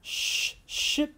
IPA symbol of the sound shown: ʃ